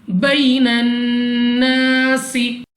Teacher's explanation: अलिफ से पहले ज़बर अलिफ मद्दा है, 2 सेकंड तक लंबा करना है